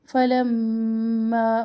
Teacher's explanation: مشدد میم مشدد پر ایک الف جتنا ٹھہرے